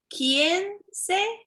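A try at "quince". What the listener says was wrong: You almost perfect, but you put one vowel extra. You say 15. You put extra E.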